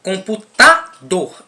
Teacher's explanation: A palavra computador tem a sílaba tônica tá e a sílaba átona, que é com